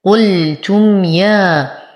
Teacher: نصبر على الميم الساكنة وبعدها حرف الياء في الكلمة الثانية، فالحكم إظهار الشفوي لا يحتاج إلى غنة · ألف صغيرة خنجرية ما قبلها مفتوح فهو من الطبيعي حركتين